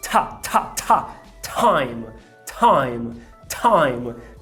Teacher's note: em vez de dizer time, eu quero que você solte esse arzinho quando estiver falando de time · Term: aspiração